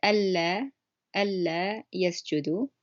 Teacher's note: The words in question is alla yasjudu. So you could tell that it's a double L sound on the first word that I said.